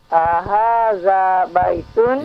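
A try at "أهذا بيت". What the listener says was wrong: Ya, A-nya pendek. Ahadza baitun.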